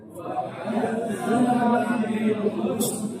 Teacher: huruf sin ketika sukun jangan diqalqalahkan. jangan dipantul di tempat kita. Jadi husna, husna, jangan dibaca husna. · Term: sin su